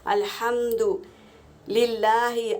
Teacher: یہاں پر دیکھو الحمد، ہا کو ہوا کے ساؤنڈ سے نکالیں گے، ہوا کی آواز آنی چاہیے۔ الحمد للہ، اللہ کے لام سے پہلے زیر ہے تو اللہ کا لام باریک پڑھیں گے